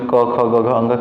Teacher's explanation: अगर क वर्ग बोले तो उसमें क ख ग घ कंठ से उत्पन्न होगा